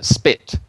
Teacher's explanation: so spit you don't have that puff of air coming out